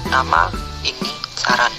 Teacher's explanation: Konsonan N, bunyi apikoalveolar kriteria nasal bersuara